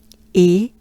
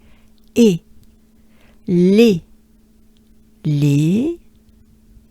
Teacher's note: It's not a banana smile. E is up there in your palate, if you will, in your upper mouth. E, and it's a bit nasal, right?